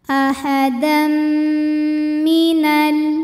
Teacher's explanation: ada hukum Idam bunah karena ada tanwin fathah menghadapi huruf mim maka bunyi tanwinnya masuk ke mim ahadam dan didengungkan jadi bunyi m-nya yang ditahan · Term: idgham bi gunnah